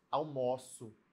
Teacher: Esse O ficou meio aberto, né? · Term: som aberto